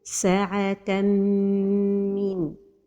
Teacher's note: And the right pronunciation is with a time for the ghunna and without pronouncing noon.